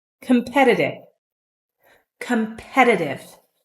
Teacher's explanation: notice when I say competitive the t's are pronounced like D's